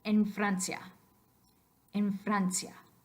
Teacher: I'm like making the F shape with my mouth but I'm not letting air come out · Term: labiodental